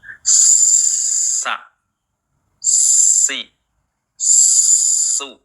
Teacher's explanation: ketika membaca sa rongga mulut terbuka ketika Si ya mulut kita meringis